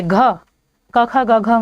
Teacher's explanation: कंठ से। ये जो घ है ये क वर्ग से है और क वर्ग के सारे व्यंजन कंठ से उच्चारित होते हैं।